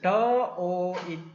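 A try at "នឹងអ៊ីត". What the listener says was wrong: 빨리 너잇. 도로 바로 하시네요. 이게 빨리 너로 시작하시는 것이 더 발음이 세련된 발음일 것 같습니다.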